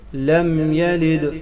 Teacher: لم یلد، لام باریک پڑھیں گے، میم پر غنہ نہیں ہوگا